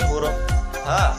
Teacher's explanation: tenggorokan yang paling dalam. Sifatnya nafas berhembus, lunak, dan suara tidak tertahan. Rokhawah, lidah di bawah istifal, terbuka antara lidah dan langit-langit atas.